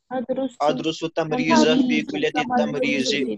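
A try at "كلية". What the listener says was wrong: हां क्या बोलते हैं ना आप कुलियतुन को इसको पढ़ते हैं कुलियतुन ये कुलियतु है कुल्लिया लाम के ऊपर भी ताजीद है और या के ऊपर भी ताजीद है फी कुल्लियत तायरान फी कुल्लियत तमरीज बहुत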